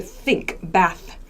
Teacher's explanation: So when I make the S sound, sink, my teeth are together, sink. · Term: unvoiced TH sound